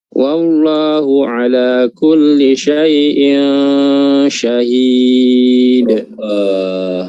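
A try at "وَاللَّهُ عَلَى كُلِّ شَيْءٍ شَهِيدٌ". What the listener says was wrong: Lafzul jalalah di huruf Allah dipertebal. Wallahu Allahu. Kurang tebal. Allah.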